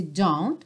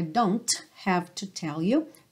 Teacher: Você não ouve o t